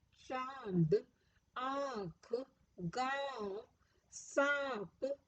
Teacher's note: इनके उच्चारण में हवा नाक और मुंह दोनों से होकर बाहर निकलती है। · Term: अनुनासिक